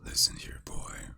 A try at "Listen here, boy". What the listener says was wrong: You almost had. Just need a little more bass.